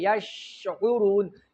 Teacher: شین کې به اواز جاری وي او عین به وسط حلق ته ورسوي.